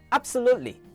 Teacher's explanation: Feel that catch in your throat on the B. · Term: glottal stop